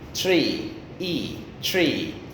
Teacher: My lips are widening. So one feature of long E, as in tree, tree, is that your lips widen.